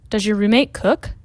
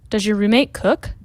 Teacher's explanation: quando nós temos o som de Z com Y, fica esse j.